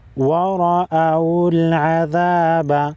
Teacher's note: را پر زبر ہے، را کو موٹا پڑھیں گے